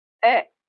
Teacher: It's a voice sound, so you should get the tickle on your tongue, that vibration, when you make this sound. So, the first way to pronounce it is the, with a schwa sound.